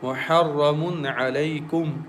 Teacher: Ha should be clear, and ra comes from the tip of the tongue, and ra is thick and heavy letter.